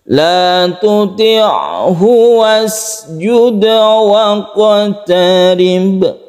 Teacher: Pendek semuanya, qalqalah semuanya ini.